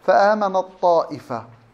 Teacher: تضغم التاء في الطاء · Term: الإضغام